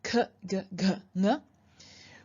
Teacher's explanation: They are pronounced all the way at the back of your mouth. They're called velar because they're pronounced close to your velum, which is at the back top of your mouth.